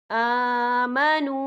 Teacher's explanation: ہم یہاں 3 یا 4 حرکت کے برابر کھینچ کے پڑھیں گے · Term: واو مدہ